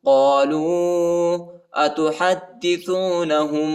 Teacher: قالوا أتحدثونهم ہا کو دال کے ساتھ ملائیں گے، دال کے اوپر شد آیا ہے، اس کو سختی کے ساتھ شدت کے ساتھ پڑھیں گے، اور ہا کو جو ہے ہم پر اخفا ہے.